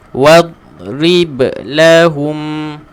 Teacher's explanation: huruf dad sepatutnya kita baca dengan mematikan huruf dad sahaja tanpa qalqalah